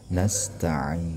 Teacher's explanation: Nasta'in, nah ini panjang sampai 6 harakat. Jadi di sini banyak mad aridnya. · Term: mad arid li sukun